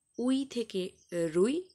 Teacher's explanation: রুই শব্দের আদিতে র ব্যঞ্জনধ্বনির আগমন ঘটেছে। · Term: আদি ব্যঞ্জনাগম